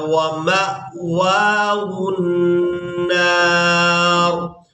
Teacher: یہاں پر ہم نے میم کو حمزہ ساکن کے ساتھ ملانا ہے تو جھٹکے کے ساتھ ادا کرنا ہے.